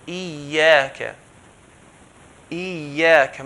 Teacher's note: Ya with the shadda, it means there's 2 yas, okay? So the first ya, we're going to merge it to the second ya. So Iyyaka. Iyyaka, make sure we merge it.